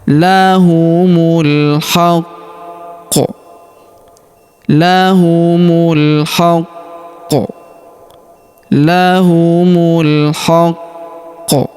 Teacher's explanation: Karena kita berhenti di sini terdapat tanda berhenti, yaitu tanda waqaf jaiz atau tanda berhenti jaiz, maka huruf ku kita tahan dan tekan terlebih dahulu karena terdapat tanda tasydid di sini. Lalu kita pantulkan atau kita qalqalahkan ya. Lahumul haqqo.